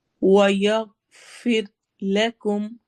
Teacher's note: غائن موٹا ہے. پھر را باریک پڑھی جائے گی